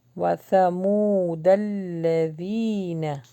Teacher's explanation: یا مدہ ہے لانگ ہوگا اور ذال کا مخرج سافٹ نکلے گا